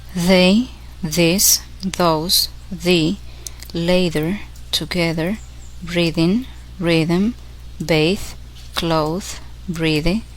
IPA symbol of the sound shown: ð